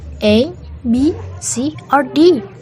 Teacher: In a list of alternatives, the first items are spoken on a high rising intonation, but the final item is on a falling intonation.